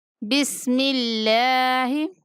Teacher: اللہ کے لام کو باریک پڑھیں گے کہ اس سے پہلے لفظ پہ زیر آ رہی ہے